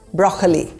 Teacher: There is no second O sound, just broccoli. The emphasis is on the first syllable, broccoli.